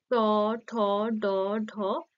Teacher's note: এগুলো হচ্ছে মূর্ধা সঙ্গে স্পর্শ করেই উচ্চারিত হচ্ছে · এই ট, ঠ, ড, ঢ, মূর্ধন্য এই 5টি ব্যঞ্জন ধ্বনি উচ্চারণের সময় আমাদের জিভের অগ্রভাগ উল্টে মূর্ধায় স্পর্শ করছে বলেই এই ব্যঞ্জন ধ্বনিগুলিকে মূর্ধন্য ধ্বনি বলা হয়